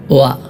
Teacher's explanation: ആദ്യത്തെ ഹർഫായ വാവ് ഉച്ചരിക്കുമ്പോൾ ഇവിടെ ഹർക്കത്ത് കൊടുത്തുകൊണ്ടുള്ള വാവ് ആണല്ലോ വ ഇങ്ങനെ ഹർക്കത്ത് കൊടുത്തുകൊണ്ടുള്ള വാവിന്റെ ഉച്ചാരണം രണ്ട് ചുണ്ടുകൾ തമ്മിൽ ഒരല്പം വിടവോട് കൂടെയാണ് · ഹർക്കത്ത് കൊടുത്തുകൊണ്ടുള്ള വാവിൻ്റെ ഉച്ചാരണം 2 ചുണ്ടുകൾ തമ്മിൽ ഒരൽപ്പം വിടവോടുകൂടെയാണ്